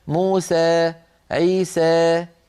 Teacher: بعض القبائل العربية تخلط صوت الألف بشيء من الياء قليلا فيقولون موسى عيسى.